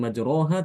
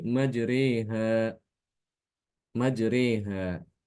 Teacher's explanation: membaca miring memiringkan fathah kepada kasrah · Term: imala